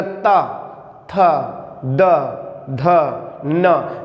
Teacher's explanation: जब हम बोलते हैं तो जीभ जो होती है वो दांतों को स्पर्श करती है, इसीलिए इनको कहा जाता है दंत व्यंजन।